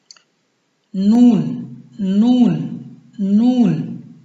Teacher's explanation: نون کا مخرج یہ ہے کہ زبان کی نوک اور انیاب سے لے کر ثنایا علیہ کے مقابل تالو سے لا کر حرف نون ادا ہوتی ہے